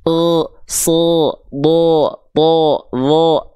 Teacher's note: kenapa huruf tebal ketika vokal fathahnya itu A berubah jadi vokal O? Karena kehalangin jalurnya sama pangkal lidah yang naik. Sehingga ketika keluar outputnya bukan A murni lagi, tapi jadinya E.